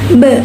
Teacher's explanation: udara tidak langsung keluar karena terhambat oleh bibir yang menutup